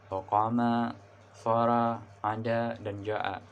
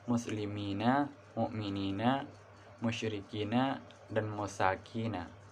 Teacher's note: dalam pengucapannya membutuhkan waktu 2 kali dari durasi pengucapan vokal pendek. Tanda atau huruf yang digunakan untuk menunjukkan vokal panjang dalam bahasa Arab diantaranya yaitu huruf alif yang didahului oleh fathah.